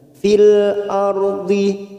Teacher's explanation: Lam ta'rif yang di sini bersukun namanya idhar qamariyah. Fil ardi, ra sukun yang didahului fathah kita baca tafkhim